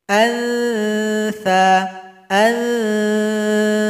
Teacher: Berikutnya huruf tha, ujung lidah dengan ujung gigi seperti tergigit. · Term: ikhfa hakiki